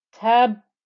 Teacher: that final noise comes from the second ba with the sukoon getting a qalqala